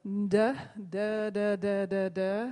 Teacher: if everybody places their finger on their vocal fold, on their larynx, and then does a d, d, d, d, d, d sound, you can feel that vibration there